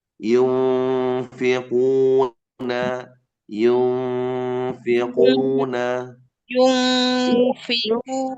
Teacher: membunyikan fa setelah nun sukun itu dengan menempelkan gigi di bibir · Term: ikhfa